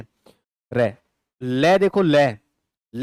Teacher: ले जैसे ही उच्चारण करते हो तो जीभ के पार्श्व भाग, साइड भागों से क्या आती है? हवा बाहर आती है। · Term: पार्श्विक वर्ण